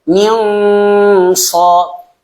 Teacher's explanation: Karena yang namanya tebal itu kan dengan mengangkat pangkal lidah, maka memang suaranya dia tebal seakan-akan seperti eng juga.